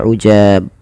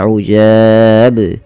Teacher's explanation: bacaan qalqalah yaitu memantul